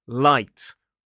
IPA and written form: laɪt (light)